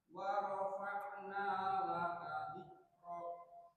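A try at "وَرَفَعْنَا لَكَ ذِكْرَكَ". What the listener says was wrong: Nah, kafnya kasih hams, dzikrak. Nah, gitu.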